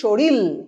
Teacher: আবার শরীর, দুটোই বয়শূন্য র, কিন্তু সেখানে কামরূপী উপভাষায় আমরা বলছি শরীল, অর্থাৎ অন্তিম যে র সেটি পরিবর্তিত হচ্ছে ল ধ্বনিতে, অর্থাৎ সমীভবনের ঠিক বিপরীতে অবস্থান করছে এই বিষমী ভবন।